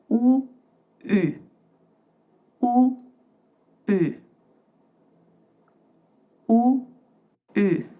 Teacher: To make the sound U, make the sound OO and with your mouth all puckered, say I, but don't move your lips.